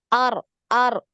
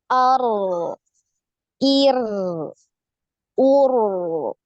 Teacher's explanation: ketika sukun huruf ro ini mengalir ya, suaranya mengalir. Nah, ini yang perlu Antuna perhatikan ya, jadi dialirkan suaranya ketika sukun. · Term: aliran suaranya